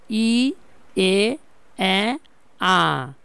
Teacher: ইচ্চ মধ্য একটু নিচে নামে আসবে। এ আ ধীরে ধীরে নিচে নামতেছে